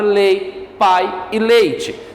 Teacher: ele começa com um som forte que é a vogal e cai para um som fraco